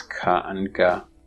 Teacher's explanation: The tongue body, on the other hand, is used for producing ka and ga, because that's further back in the mouth, as you can see in the chart. And here, the body, not the tip or blade, is engaged with the velum, creating the velar sounds ka and ga